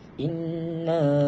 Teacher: terdapat hukum nun syaddah yakni dengan hukumnya ialah wajibul ghunnah. Kita perlu membaca dengan dengan ghunnah dengan kadar dua harakat.